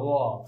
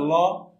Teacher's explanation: ল বায়ু নির্গত হয়। এই জন্য দুই পাশ থেকে যেহেতু বাতাস নির্গত হয়ে আসে, এই জন্য লটাকে বলা হয় কি তোমার পার্শ্বিক ব্যঞ্জন